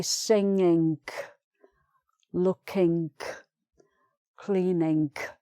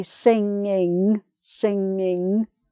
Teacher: So no hard G and no K for the ings.